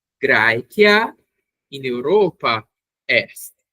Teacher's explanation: Lembrem que a pronúncia desse AE tem som de AI e que o C tem sempre som de K